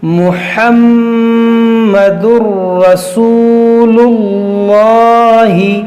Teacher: تنوین کے بعد را ہے تو یہاں پر ادغام ہوگا لیکن بغیر غنہ کے